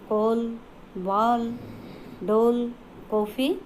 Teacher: इस ध्वनि का प्रयोग केवल अंग्रेजी के शब्दों में किया जाता है। इसका उच्चारण हम आ या ओ और औ के बीच में होता है, जैसे कॉल, बाल, डोल, कॉफ़ी आदि। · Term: आगत ध्वनियाँ